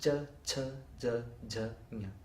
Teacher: the next group of sounds in sanskrit where what happens is the upper middle of the tongue is coming in contact with the back of the roof and you get cha cha now the most interesting part is